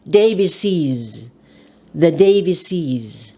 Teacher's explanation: You add another ES. The ES is pronounced IZ. Davises. The Davises.